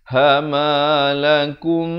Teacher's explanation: Di sini didengungkan mim mati bertemu mim dua harakat.